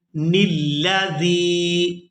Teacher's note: تا کو اس کی اپنی حرکت یعنی زیر کے ساتھ ادا کرنا ہے اور نون کو لام مشدد کے ساتھ ملانا ہے